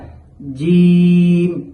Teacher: আর জিমের মাখরাজ হচ্ছে জিহ্বার মধ্যখান তার বরাবর উপরের তালুর সাথে লাগাইয়া